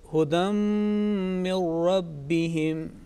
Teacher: Okay, I think this phrase or these 3 words are quite rich, and it carries both types, both kinds of assimilation. The first one, hudam, here is a nasal sound, long nasal sound is produced. Next one, the min, the noon sakin followed by ra mushaddad, which there is no nasal sound.